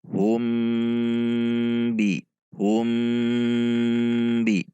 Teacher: Tidak boleh dibaca humbi, namun harus ada dengung 2 harokat. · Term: ikhfa syafawi